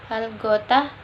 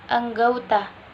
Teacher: Perubahan ini terjadi pada bunyi vokal tunggal O ke vokal rangkap AU, tetapi tetap dalam pengucapan satu bunyi puncak. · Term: diftongisasi